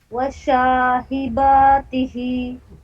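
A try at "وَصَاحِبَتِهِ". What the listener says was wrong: वशा तो बिल्कुल नहीं पढ़ेंगे. CAT कैट वाला फार्मूला लगाइए आप.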